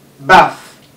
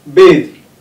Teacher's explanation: the first one is voiceless, while the second one is voiced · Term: dental fricative